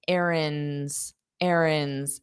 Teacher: notice how I don't pronounce that D. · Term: dropped sound